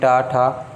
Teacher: जीभ थोड़ी सी मुड़ रही होती है, उसे मूर्धन्य बोलते हैं